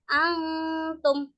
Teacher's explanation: Nah, kalau cara membaca hukum bacaan ikwan hakiki yaitu dengan samar-samar. Samar-samar antara suara nun dan ta itu dibacanya berdengung atau samar-samar. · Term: ikhfa hakiki